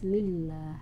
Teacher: “Lillah” di sini mengikuti hukum Lam Jalalah Tarqiq. Jadi, harus tipis: "lillah." Kemudian, dalam kata "lillah," yaitu kata Allah, " lillah" hanya perlu diucapkan selama dua harakat, tidak lebih.